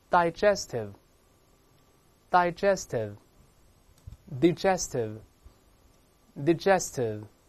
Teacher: 两个发音先发，前面发▁I▁或者发▁A▁都是正确的 · 最后都是停留在上牙处下唇发▁V▁这个声音